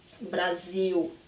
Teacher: when I say this L at the end, my tongue does not go up. It doesn't touch the roof of my mouth. It doesn't roll up, right?